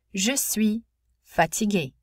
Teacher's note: there was no z in front of fatigué because I did not need what's called a liaison between the final consonant sound and a vowel of the next word